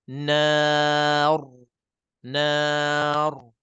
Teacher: Sifat takrir itu getaran, gegaran pada lidah kita tu jangan berlaku lebih.